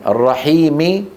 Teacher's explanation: فيكسر الميم التي في اخر التعوز والميم من الرحيم